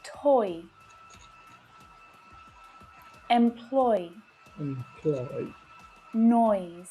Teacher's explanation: notice how quickly my mouth moves between these sounds to make one sound the diphthong sound oy